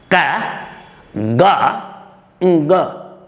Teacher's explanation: The three ka, ga, nga are called velar consonants